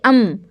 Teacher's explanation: میم کا مخرج آپ کے ہونٹوں میں ہے اور آواز جو بند ہوئی وہ ہونٹوں پر بند ہوئی